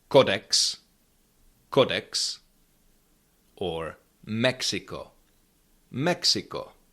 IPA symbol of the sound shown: ks